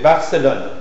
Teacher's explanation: C'est une consonne orale, occlusive, bilabiale et sonore.